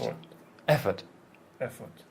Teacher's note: So you just go from the F basically to the T.